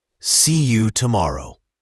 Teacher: see you often becomes see ya